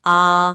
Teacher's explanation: विवृत्त में मुंह पूरा खुलता है, जैसे डॉक्टर के पास कहते हैं ना, आ।